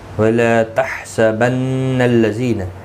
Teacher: حا کا خاص خیال رکھیں، وسط حلق والا ہے